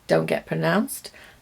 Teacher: Did you hear when I said don't get pronounced? I didn't pronounce the T.